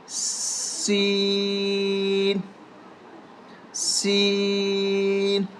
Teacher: سین سیٹی کی طرح، سیٹی کی آواز آنی چاہیے